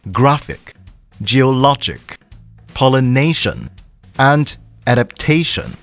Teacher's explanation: begin four words ending in IC s io n or tion the word stress is on the penultimate meaning the second last syllable